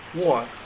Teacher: the consonant is non-rhotic, meaning that the R is dropped unless followed by vowel